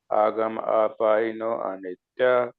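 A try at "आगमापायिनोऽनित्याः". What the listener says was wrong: हाँ जी, यहाँ देखिए आपने उच्चारण किया आगम पाइनो अनित्या, तो यहाँ अनित्या नहीं है, यहाँ आगम पाइनो नित्याः। तो ये जो एक चिन्ह देख रहे हैं, संस्कृत में इसको अवग्रह बोलते हैं। तो अवग्रह जो है, वो जो चिन्ह है, वो अंग्रेजी भाषा में जैसे एपोस्ट्रॉफी होता है, उसी की तरह है।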